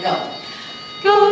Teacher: O to oo. Go is O to oo. It ends in oo. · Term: long O